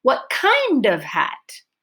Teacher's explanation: My pitch change and my long, clear vowel is on kind.